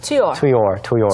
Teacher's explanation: 한 단어처럼 이어지게 되는 거죠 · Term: linked